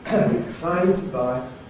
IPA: wiv dɪˈsaɪdɪd tə ˚baɪ